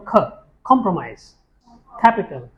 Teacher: All these will have a touch of H after that.